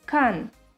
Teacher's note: the fourth tone is a falling tone